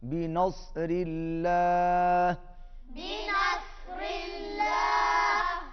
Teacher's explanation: اللہ کلام باریک اور صاد موٹا